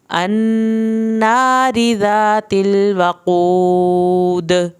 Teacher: وقود واو کی زبر اور قاف یہاں پہ پر کر کے پڑھا جائے گا، واو ساکن کو کھینچا جائے گا اور آخر میں دال پہ کلکلا کرنا ہے